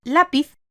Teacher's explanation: tiene su fuerza de acentuación en la penúltima sílaba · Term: Palabras llanas